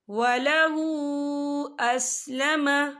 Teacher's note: ہا کے اوپر الٹا پیش ہے اور اس پر چھوٹی سی مد بھی ہے، تو ہم اسے 4 حرکت کے برابر کھینچے پڑھیں گے